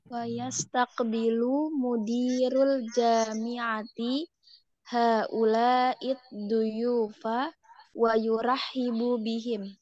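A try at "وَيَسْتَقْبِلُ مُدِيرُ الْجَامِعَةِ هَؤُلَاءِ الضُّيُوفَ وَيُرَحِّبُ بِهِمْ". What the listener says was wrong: Iya, bagus.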